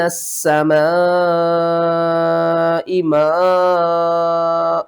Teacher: 5 5 الف کے برابر آپ نے ان دونوں کو کھینچ کر پڑھنا ہے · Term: مد متصل